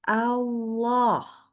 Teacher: Allah itu lamnya tebal. Nah, cuman hati-hati bacanya harus tetap A ya. Allah. Tidak boleh menjadi Allah.